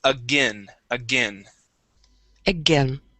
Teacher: the AI actually makes a short I sound